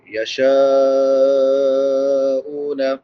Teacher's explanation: میم کے بعد الف مدہ ہے، الف سے پہلے زبر ہے، ایک الف برابر لمبا کریں گے۔ یشاءون، شین کے بعد مد متصل ہے، حمزہ اسی کلمہ میں ہے، تین الف برابر لمبا کریں گے۔ حمزہ کے بعد واو مدہ ہے، واو ساکن ما قبل ضمہ یعنی پیش ہے، ایک الف برابر لمبا۔